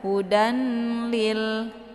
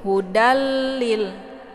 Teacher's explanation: Jadi meskipun kita menggabungkan bunyi 'dal' ke dalam bunyi 'lam', hal itu dilakukan tanpa nasalisasi. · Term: idgham bila ghunah